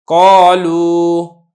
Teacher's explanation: اور اسی طریقے سے جب حرف مدہ کے بعد ہا یا حمزہ زائدہ نہیں ہے تو پھر آپ نے اس کی جو ادائیگی کرنی ہے، ادائیگی میں آپ نے اس چیز کا خاص خیال رکھنا ہے کہ ادائیگی کے اندر جو ہا کا اضافہ نہ ہو جائے یا ایک اضافی حمزہ آپ نہ پڑھ لیں